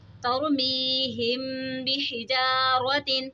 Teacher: میم ساکن کے بعد حرف با رہے تو یہاں پہ اخفاء شفوی ہوگا، یعنی ہم نے یہاں پر غنہ کر کے پڑھنا ہے